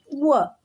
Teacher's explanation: ದಂತ ಮತ್ತು ಓಷ್ಟ ಇದರಿಂದ ಉಚ್ಚಾರಣೆ ಮಾಡುವಂತಹ ಅಕ್ಷರಗಳು